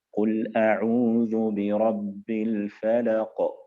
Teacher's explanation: القلقلة الكبرى إذا جاء أحد حروف القلقلة ساكنا مخففا موقوفا عليه، نحو قول الله سبحانه وتعالى قل أعوذ برب الفلق، حينما أقف على القاف في الفلق فتكون هناك قلقلة كبرى